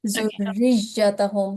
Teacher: So here are two mushaddad letters. So stress should be on both of these letters.